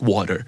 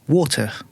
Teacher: T in the middle of the word, like not all the words, but a lot of words, would sound more like a D